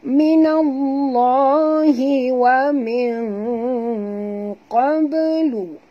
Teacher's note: Kita sorokkan bunyi nun ke dalam qaf disertai dengung ikhfa hakiki dan huruf qaf ni tebal